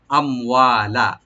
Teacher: আম হামজাকে right দিয়ে মিম সাকিন এখানে এজাহার করবেন, এখানে কোনো কলকলা বা গুন্না হবে না। আম ওয়া, ওয়াটাকে ওপেন করে কালে টানবেন, লামে কোনো টান হবে না